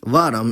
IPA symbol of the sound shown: ɐʋ̃